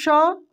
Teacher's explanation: तो तालव्य श का उच्चारण दोस्तों तालु से होता है